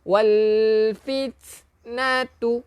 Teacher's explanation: Salah sebab dia bukan qalqalah. Ini sifat hamas. Keluarkan angin.